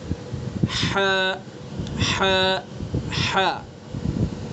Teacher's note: حلق کا جو بیچ کا حصہ ہے اس درمیانی اور بیچ کے حصے سے ہم ہا ادا کریں گے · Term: وسط حلق